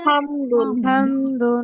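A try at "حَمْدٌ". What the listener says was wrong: হা হবে না, বড় হা, এটা গলার মাঝখান থেকে হবে হা। কেন যেন সবার অনেকের হাটা সুন্দর হচ্ছে না এখন।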